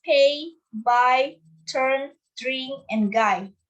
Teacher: First is stop or plosive. We build pressure of air and then release it. This is a sudden burst of air.